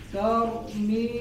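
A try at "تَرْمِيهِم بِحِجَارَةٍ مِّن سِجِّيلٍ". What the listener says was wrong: Jangan jeda, jangan diputus suaranya. Tarmihim. Ada tambahan gunnah ditahan.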